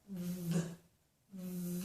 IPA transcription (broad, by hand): ð